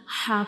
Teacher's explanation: इसका जो मखरिज है इसको हम जो मिडिल वाला पार्ट होता है, दरमियान वाला हिस्सा होता है गले का उधर से हम ह को प्रोनाउंस करते हैं।